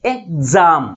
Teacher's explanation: ఎగ్జామ్ అంటే second syllable first syllable కంటే ఎక్కువ ఫోర్స్గా పలుకుతుంది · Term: ప్రైమరీ స్ట్రెస్